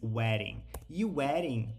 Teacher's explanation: ao invés de dizer weding né com o som de D ele pega e muda para um som de R